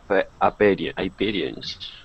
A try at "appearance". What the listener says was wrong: Good. Much better with that R sound.